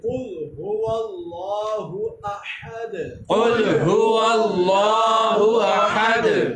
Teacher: اس میں اللہ کا جو ہا ہے یہاں پر، اس کا مخرج ہے حلق کے نیچے والے حصے سے، کیونکہ یہ گول ہا ہے